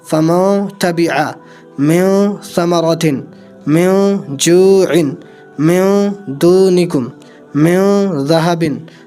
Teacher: اب جہاں کہیں بھی پورے قرآن میں نون ساکن کے بعد میں اگر حروف اخفا میں سے کوئی حروف آتا ہے یا تنوین کے بعد میں حروف اخفا میں سے کوئی حروف آتا ہے، ان 15 حروفوں میں سے کوئی حروف آتا ہے تو ناک میں آواز لے کر کے جائیں گے، یعنی غنہ کر کے پڑھیں گے